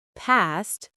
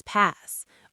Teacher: If you're saying past and you don't pronounce that t at the end, it might sound like pass.